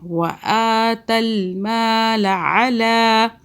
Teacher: آگے چلیں، وآ کو کھینچ رہے، کھڑا زبر جو ہے یہ کھینچتا ایک الف کے برابر